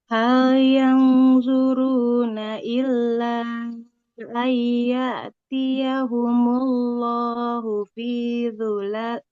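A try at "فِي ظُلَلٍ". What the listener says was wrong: Fi dhula, lanya nggak panjang ya.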